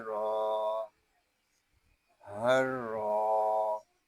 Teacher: یہاں را کو ہم ایک الف تک کھینچ کر پڑھیں گے کیونکہ یہاں الف مدہ ہو رہا ہے۔